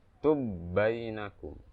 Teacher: Bainakum itu hukum asalnya. Tapi karena sulit, tubainakum digabungin dari 2 menjadi 1 ba yang bertasdid, yang ditasdidkan.